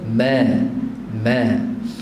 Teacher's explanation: Mim selalu orang akan ajar makhraj dia dua bibir. Bibir dirapatkan. Kalau kita tak rapat, kita tak boleh sebut sampai bila-bila. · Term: huruf mim